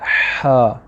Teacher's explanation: गले का जो दरमियाना हिस्सा है इससे हम हा निकालते हैं। पहले सांस को स्टोर करें, फिर हल्का सा बाहर निकालें।